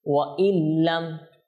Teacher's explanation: দেখেছেন আমরা ওয়া ইন বলতেছি না, ওয়া ইল বলতেছি, কারণ কি ইদগাম হয়ে গিয়েছে।